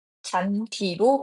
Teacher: 잔디와 같은 단어는 단일 형태소 내이기 때문에 디귿과 이가 만난다 하더라도 잔지로 발음하지 않고 잔디로 발음하는 것이 맞습니다